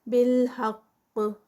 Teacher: نزل الکتاب، نزل الکتاب تا پہ 2 counts، بالحق اینڈ پہ قاف کا قلقلہ